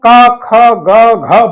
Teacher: ख ग घ बोलते हैं तो हमें ऐसा लगता है कि हमारे गले के पास हमारे कंठ में हवा का घर्षण होता है